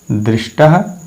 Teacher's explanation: इसी प्रकार से दृश धनतः, यहाँ तवर्ग त का योग मूर्धन्य श से हो रहा है, तो परिवर्तन तवर्ग त के स्थान पर मूर्धन्य ट हो जाएगा